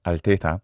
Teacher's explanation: The Italian ear will hear either the closed e or the open e and this true mid vowel altea it's not either.